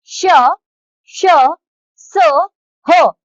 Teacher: उष्म व्यंजन उष्म का अर्थ है गर्म जिन व्यंजनों के उच्चारण के समय वायु रगड़ खाकर निकलती है उन्हें उष्म व्यंजन कहते हैं